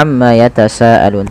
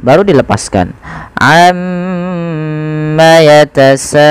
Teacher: tahan dahulu gunahnya atau bunyi suara mimnya sepanjang dua harakat